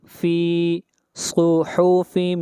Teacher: صاد کو موٹا پڑھیں گے، صاد حروف استعلا میں سے ہے